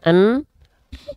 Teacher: dengung itu masuk ke rongga hidung cara membuktikan suara kita sudah masuk hidung alias dengung buka tutup